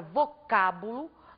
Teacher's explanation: ao pronunciarmos a palavra vocábulo nós acentuamos a antepenúltima sílaba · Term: palavras proparoxítonas